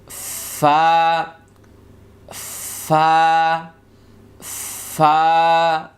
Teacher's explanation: 14 নম্বর মাখরাজের নিচের ঠোঁটের পেট সামনের উপরের 2 দাঁতের আগার সঙ্গে লাগিয়ে একটি হরফ। এই যে 2 দাঁত আছে আমরা ঠোঁটের সঙ্গে লাগাই দিব, এখান থেকে একটা হাসি দিতে পারেন, তাহলে ঠিক হয়ে যাবে।